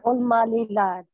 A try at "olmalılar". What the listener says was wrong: Lılar. Li değil, lı. Lılar. Olmalılar.